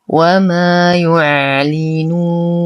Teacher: نتم ضمة الياء نصبر على العين نتم كسرة اللام وضمة النون نو وليس نو. نقف على النون بسكون عارض وقبله حرف مد فهو مد عارض للسكون يمد بمقدار 2 4 6 حركات